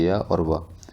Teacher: उसके बाद अर्धस्वर किसे कहते हैं, इनके बोलने से मुख द्वार बहुत सकरा हो जाता है और हवा स्वर की भांति बीच से निकल जाती है